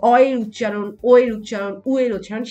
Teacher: যেমন দেখো অ এর উচ্চারণ, ও এর উচ্চারণ, উ এর উচ্চারণ, সেই ক্ষেত্রে ঠোঁটের অবস্থা কিন্তু গোলাকৃত হয়ে যাচ্ছে, ঠিক আছে। মানে ঠোঁটের অবস্থা গোলাকার হয়ে যাচ্ছে, ঠোঁট গোলাকৃত হচ্ছে। তাহলে সেই ক্ষেত্রে এই যে অ ও উ এই উচ্চারণ, এদের উচ্চারণ কিন্তু আমরা দেখতে পাচ্ছি এদের উচ্চারণ ভেদে এদেরকে গোলাকৃত স্বরধ্বনি বলা যেতে পারে।